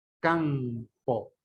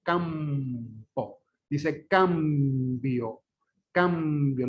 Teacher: debería sonar N, pero suena M y punto. Suena bilabial en vez de alveolar.